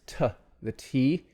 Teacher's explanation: the tongue tip touches the alveolar ridge or maybe right behind it it briefly blocks the airflow and then releases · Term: stop sounds